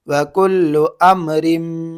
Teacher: حمزہ میم زبر ام، وکلو ام. را کو میم میں ملانا ہے، را میم دو زیر رم، وکلو امرم.